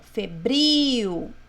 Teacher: Acento mais forte é o bril.